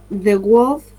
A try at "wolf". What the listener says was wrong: It's wolf. Muy cortita. No, vos decís algo como wo, y es wolf, como huevo, como de huevo. Wolf. Wolf. es como un ladrido. Wolf. No hay una O.